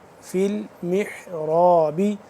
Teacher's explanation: را الف زبر، را کو پر کر کے پڑھیں گے